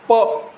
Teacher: प म्हणताना ओठ बंद होतात आणि मागून काय सांगा, हवेचं प्रेशर बनते, मग ओठ उडवून लावली जाते आणि प बाहेर पडतो.